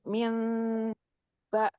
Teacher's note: Iklab berarti nun sukun ini diubah menjadi mim sukun dengan disertai dengung ya